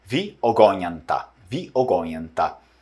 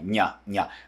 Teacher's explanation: O N é palatalizado, parece aquele N do espanhol, né, que produz o som do dígrafo consonantal.